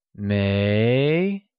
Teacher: pronounced with a mid rising tone